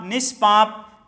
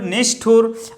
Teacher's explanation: तो क खा, टाठा और पाफा यदि ये आए विसर्ग के बाद तो विसर्ग का ये सा हो जाता है, मूर्धन्य सा हो जाता है।